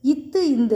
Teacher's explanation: மேல்வாய் பல்லினது அடியை நாக்கின் நுனி தொடும்